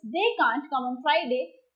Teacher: the modal verb can't and the verb come are stressed more in that sentence.